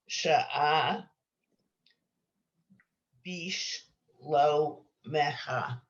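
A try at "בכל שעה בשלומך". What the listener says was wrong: Beautiful. You guys are doing great.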